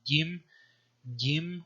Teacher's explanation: gim gim which is a palatal uh voiced stop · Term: palatal voiced stop